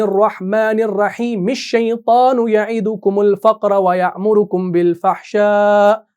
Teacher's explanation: اب آپ نے رحیم کی میم کو شیطان کے ساتھ آگے ملا دیا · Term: وصل کل